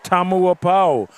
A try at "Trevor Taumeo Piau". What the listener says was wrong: What do you mean, Tamuapau? You got to pronounce every vowel there.